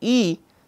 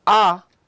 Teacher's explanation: So, the way the jaw moves, it determines the or it makes the triangular vowel space which we are looking at here. Now, the vowel EE is said to be high because the jaw is positioned high, closing the mouth, and the vowel AH is said to be low because the jaw lowers to open the mouth. So, when I see E, the jaw is high, but when I say A, in this the jaw comes down, and so this is low, the A is low in terms of jaw movement, and EE is high movement of the jaw.